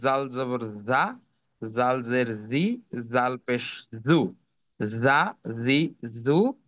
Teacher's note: জিহবাটা দাত থেকে একটু সামনে এগিয়ে এসে উচ্চারিত হবে